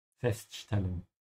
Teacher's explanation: we have an S before a T here, so make sure you say sh